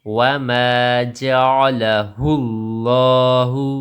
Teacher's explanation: لفظ اللہ کی لام کو موٹا کر کے پڑھیں گے، اس سے پہلے زیر ہو تو یہ باریک، ورنہ یہ ہر حالت میں پر موٹی پڑ جاتی ہے۔